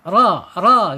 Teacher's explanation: Kemudian secara sifat ada di tawasud ya, antara tertahannya suara dan mengalirnya suara